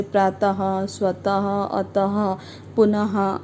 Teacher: विसर्ग स्वर के बाद आता है। इसका उच्चारण ह की तरह होता है,